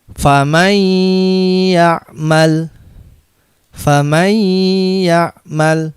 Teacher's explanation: Faman ya'mal. Nun disukun ini dianggap tidak ada tapi dimasukkan ke huruf ya-nya. Dan ya-nya ditasydid. Nah, ini kan nun sukun atau tanwin dimasukkan menjadi satu dengan huruf sesudahnya atau ditasydidkan dengan mendengung. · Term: idgham bi gunnah